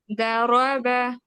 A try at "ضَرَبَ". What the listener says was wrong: ضرب. रॉ को भी हैवी करें. जबर.